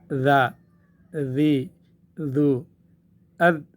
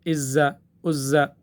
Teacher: زبان ہم دانتوں کے نیچے لے آئیں گے، دونوں اوپر اور نیچے کے دونوں دانتوں کے درمیان میں جب زبان آ جائے گی تو وہاں سیٹی کی آواز نہیں آ سکتی ہے